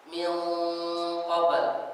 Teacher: Seperti misalkan min qabl, nun dengan qaf. Kita lihat sini nun ada gunnah, setelahnya qaf, maka gunnah di sini jadi tafkhim tebal.